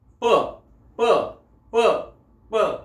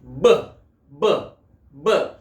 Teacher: When we say P, there is no tension to the vocal cords, and when we pronounce B, then there is the tension to the vocal cords.